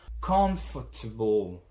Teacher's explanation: See that the fort is not pronounced at all or barely.